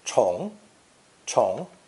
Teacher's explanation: the pronunciation changes to the second one becoming second tone chong chong clarifies why our load is so heavy and it